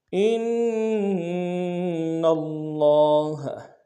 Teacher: سَبِيلًا فَإِنْ أَطَعْنَكُمْ فَلَا تَبْغُوا عَلَيْهِنَّ سَبِيلًا ان اللہ، حمزہ کو نون کے ساتھ ملانا، نون کے اوپر تشدید زور دیں گے، لیکن نون کو لفظ اللہ کے لام کے ساتھ ملانا، تشدید زور دیں گے کہ لام کے اوپر کھڑا زبر کے اندر میں کھینچیں گے.